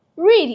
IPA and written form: riːd (read)